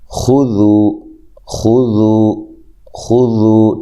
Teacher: اس کو ذال کو بڑے دھیان سے ادا کرنا ہے، خا کو موٹا، ذال کو باریک۔ اچھا جی، یہ واو مدہ ہے۔